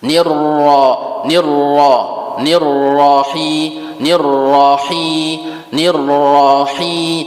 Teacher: Nirnya itu, nirnya tebal. Atau bacaan ro tafkhim.